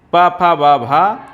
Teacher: ये ओष व्यंजन है क्या है ओष व्यंजन है